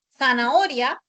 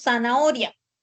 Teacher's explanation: Hemos reemplazado la fricativa interdental por la S. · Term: ceseo